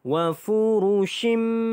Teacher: Okey, di sini wa furushim, tanwin ini bertemu dengan huruf mim. Maka didengungkan dengan dua harakat, masuk dan dengung, idgham ma'al gunnah.